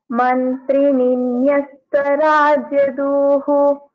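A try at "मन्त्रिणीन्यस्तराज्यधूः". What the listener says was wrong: धूः ध is a महाप्राण here okay यू should practice दि महाप्राणास धन्यवाद अनुजा चित्रा भगिनी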